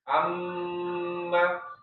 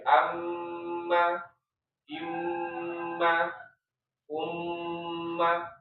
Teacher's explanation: dalam kondisi bertasdid dia gunanya sangat kuat ya amma dan dia juga durasinya [berdehem] agak lama ya agak lama dalam artian ee ada yang menyebutnya dua ya dua harakat tapi perlu diingat dua harakatnya gunah dengan dua harakatnya mad itu berbeda.